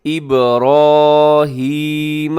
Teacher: را کے اوپر کھڑا زبر ہے، را موٹی پڑے گا